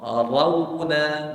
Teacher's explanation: fathah ro apabila berbaris fathah tebalkan dia Ro buka mulut ro Bila masuk dekat wau sukun mulut kena muncung mulut kena munc tapi jangan terus-terus muncung kena buka dulu buka